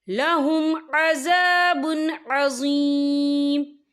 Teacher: وَأُولَئِكَ لَهُمْ عَذَابٌ عَظِيمٌ، یہ دیکھیں لَهُمْ عَذَابٌ، با کے پر تنوین ہے، تنوین کے بعد جو ہے عین آ رہا ہے، اور عین جو ہے حروف ہلکی کا ورڈ ہے، تو ہم یہاں اظہار کریں گے، اور ہم اسے بنا غنّے کے پڑھیں گے۔